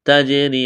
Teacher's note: قلقلہ کریں گے جیم پر، را کو باریک کرنا ہے، یا ساکن سے پہلے زیر ہے، یا مدہ ہے، ایک الف کے برابر کھینچنا ہے